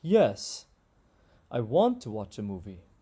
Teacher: the pitch is falling it goes up and then it comes back down